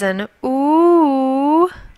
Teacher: the letter U is not pronounced like you but pronounced ooh